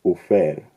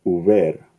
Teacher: So to give an example, Proto-Indo-European uber, when affected by Grimm's Law, becomes ufer. Because the voiceless fricative f has an unstressed syllable before it, Verna's Law takes place and it becomes voiced. Uver. This is the word that becomes over in English.